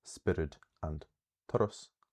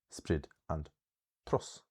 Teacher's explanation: Sometimes in Munster, this secondary stress is so strong that the first syllable vowel is actually lost. So, instead of spiorad and toradh, in Munster, we have words like spriod and tros.